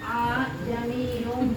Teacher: meringankan bunyi hamzah yang kedua